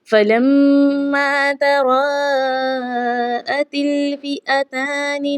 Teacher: ता के बाद लाम है, लाम के साथ मिलाया जाएगा क्योंकि लाम पर जज़्म है, खाली अलिफ नहीं पढ़ा जाएगा